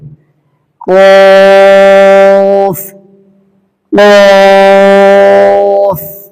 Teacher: কফ হরফটা 3 আলিফ থেকে 4 আলিফ প্রাণ দিয়ে পড়তে হবে। এটা উচ্চারিত হয় জিহ্বার গোড়া এর বরাবর উপরের তালুর সাথে লাগিয়ে এবং এটা একটু মোটা আওয়াজে উচ্চারিত হবে।